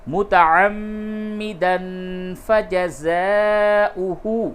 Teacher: تنوین کے بعد فا ہے، اس جگہ پہ اخفا ہوگا